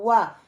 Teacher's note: اگر اس کے اوپر وا کے اوپر زبر آئے گی، ہاں پھر میں کہہ سکتی ہوں واو فتح وا، ہاں میرے لپس کا حصہ جو ہے وہ راؤنڈ ہو رہا ہے